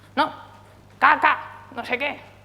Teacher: Para regañar a un bebé, pues todo lo contrario. Bajaban el tono de voz y en general hacían frases mucho más cortantes, lo que en música se conoce como staccato